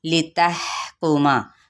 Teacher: ہا پہ ہمس کرنا ہے اور ان حرکات کو لمبا نہیں کریں گے